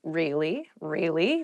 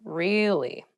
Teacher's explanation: to show that you're not so interested in the conversation with downward intonation · to show you're interested in a conversation with upward intonation